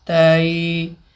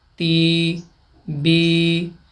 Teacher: تا یا زبر تئی، تو یا سے پہلے زبر ہو تو یا لین اور آواز اسی طرح تئی، اور یا سے پہلے زیر ہو تو یا مدہ، آواز بنے گی تی بی